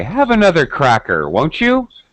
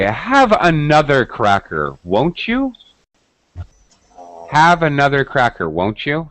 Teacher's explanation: we use rising intonation to offer something to somebody